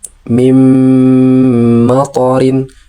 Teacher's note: nunnya dilarikan ke huruf mim, melebur itu namanya, sementara huruf mimnya didengungkan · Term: idgham bigunnah